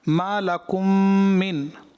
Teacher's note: मीम साकिन के बाद दूसरी मीम आ गई, पहली मीम को दूसरी मीम में दाखिल करना था, इदगाम शफ़वी. यहाँ गुन्ना की मिक़दार जो है पूरी नहीं हुई.